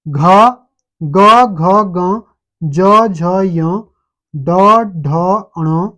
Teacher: गले में वाइब्रेशन हो रही है, एक कंपन टाइप की उत्पन्न हो रही है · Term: सघोष व्यंजन